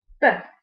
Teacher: The lips come together, the airflow is blocked and then released. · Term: voiced b